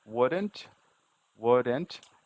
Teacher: You can hear the NT separation, but there's no vowel here.